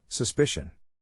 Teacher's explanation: in this case the accent is in the second syllable